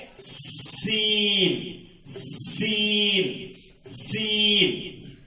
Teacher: یعنی زا کو جس طرح آپ دونوں دانتوں لگا رہے ہیں اور زبان کو نیچے کی دانتوں کی طرف اپنے پاس لگا کر کنارے کو لگا کر رکھ دیے ہیں، اسی طرح سین کو بھی رکھ دینا چاہیے. سین کی آواز میں سیٹی کی آواز آتی ہے